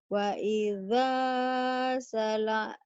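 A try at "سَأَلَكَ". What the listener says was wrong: Bukan salaka ya. Kalau alif nggak mungkin gabung. Ini alif. Ini lam. Ini alif, ini lam. Ini alif nggak mungkin lam.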